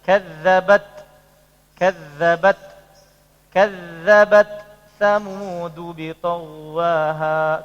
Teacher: Hamesnya tetap diucapkan, cuman bukan T sama S